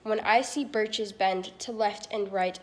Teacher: each foot consisting of two syllables an unstressed syllable followed by a stressed syllable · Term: iambic pentameter